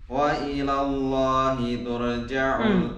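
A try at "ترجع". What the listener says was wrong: Turja, turja. Jangan ra tebal, tak bukan tebal pun.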